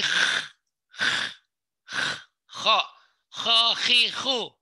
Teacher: kayak dia termasuk di leher juga ya, tenggorokan ya. Kayak orang mau buang reak.